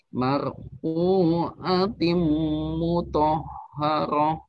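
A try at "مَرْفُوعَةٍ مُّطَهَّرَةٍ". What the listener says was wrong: Baik, gunahnya ditahan lagi.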